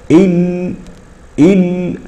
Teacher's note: نلاحظ ان راس اللسان يضرب الى فوق ويلتصق بالحنك الاعلى فلا يجد الصوت منفذا ليخرج فيخرج عن يمين اللسان وعن شماله وهذا هو الذي يقال له الانحراف وهذا هو الذي وهذه هي · في اللام ينحرف الصوت بها من جانبي طرف اللسان